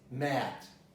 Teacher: Well, this might be a dialectal pronunciation for other dialects, but for the American accent, this is mat. You know, mat is the lowest vowel on the front part